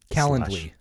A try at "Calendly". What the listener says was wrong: No R. Calendly.